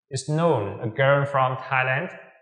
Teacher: Chúng ta sẽ phải sử dụng ngữ điệu đi lên ở cuối câu.